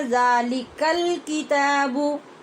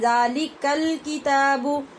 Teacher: یہاں الف لام جو تعریف کا تھا اس کے بعد کاف ہم نے ظاہر کر کے پڑھا، لام کا ادغام نہیں ہوا، لام ساکن ہوا ہے، تو اس کی صاف آواز آئی ذَلِكَ الْكِتَابُ. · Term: اظہار